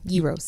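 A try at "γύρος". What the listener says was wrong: The G is silent.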